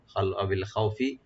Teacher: ই যেভাবে আমরা ইউজ করি এভাবে আমরা পড়বো এখানে আউইল খাউফি। খাও এখানে হারফে লিন আর খাটাকে একটু ডিপ করবো